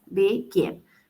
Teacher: Begin tiene la acentuación al final, es decir, en el gin.